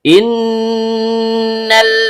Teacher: Nun, ujung lidah bertemu dengan langit-langit bagian tengah. Karena nun-nya bertasydid, maka hukum bacaannya ghunnah asli. Dibaca dengung dan setiap dengung keluar dari hidung. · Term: gunnah asli